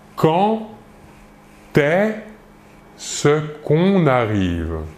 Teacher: Le verbe commence par un E. Le D, ici, pour la liaison, va se prononcer comme un T, comme si c'était un T, mais on l'écrit D.